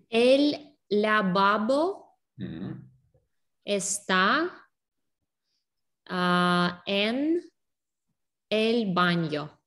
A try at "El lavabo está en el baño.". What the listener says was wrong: Perfecto. Correcto.